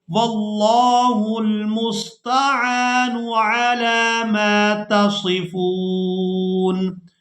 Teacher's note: نون کو ساکن کر دیں گے، فا کو واو ساکن اور نون ساکن کے ساتھ ملا کر ادا کریں گے